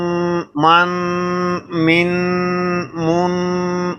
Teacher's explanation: یہ ناک میں آواز جا رہی ہے، آواز کو چھپایا جا رہا ہے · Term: اخفا